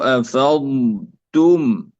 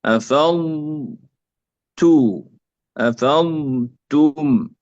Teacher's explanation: وهنا لا يوجد إدغام هنا، الضاد لا تدغم في التاء